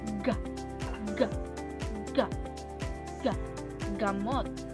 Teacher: sa punto ng artikulasyon na velar na bahagi ng pangngala-ngala at paraan ng artikulasyon na pasara